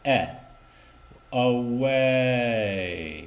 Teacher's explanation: keep your tongue down a half a second longer on the first vowel